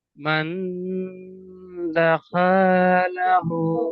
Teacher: হার উপরে উল্টা পেশ আছে, উল্টা পেশ ওয়াও মাদ্দার সমান, তাই এক আলিফ পরিমাণ টান দিয়ে পড়তে হয়।